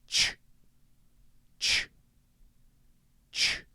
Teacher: The basic mouth shape is similar. Instead, you're starting with that tongue against the top of your mouth and then releasing it and stopping it again immediately. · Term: CH sound